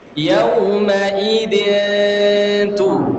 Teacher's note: Meskipun ada dengungnya, nun itu hilang. Karena ikhfa itu menghilangkan, ya.